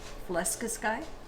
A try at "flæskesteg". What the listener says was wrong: It's with a T though, so steg.